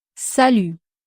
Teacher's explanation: You don't have to pronounce the final T, and the letter U is pronounced U.